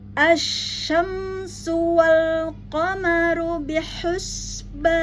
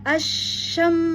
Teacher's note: tafasyi wajib untuk kita keluarkan alirkan tafasyinya ya keluar udara pada rongga mulut